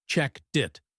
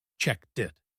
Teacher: The T at the end of checked becomes the start of it. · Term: link